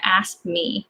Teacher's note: So K kind of disappears